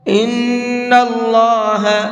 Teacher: ان اللہ، اللہ کے نام کو یہاں بھی مبھر کے پڑھیں گے، اس لیے کہ یہاں پر اللہ کے نام سے پہلے زبر ہے، اور اللہ کے نام سے پہلے زبر ہوتا ہے تو اس اللہ کے نام کو بھی مبھر کے پڑھتے ہیں